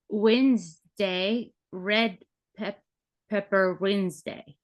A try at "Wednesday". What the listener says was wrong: You need a little more time. It's part of what's nice about the hand is just the movement is the time. So if we need more time, we can even come all the way out.